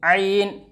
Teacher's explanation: आइन का मखरज बीच हलक से